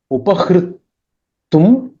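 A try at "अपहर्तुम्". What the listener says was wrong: Not upa.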